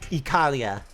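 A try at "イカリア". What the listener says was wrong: No, that's too much L. Ikaria.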